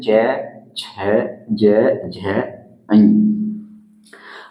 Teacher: बाकी जो वर्गीय व्यंजन है उनकी तुलना में इनमें थोड़ी घर्षण के साथ मुख से हवा निकलता है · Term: स्पर्श संघर्षी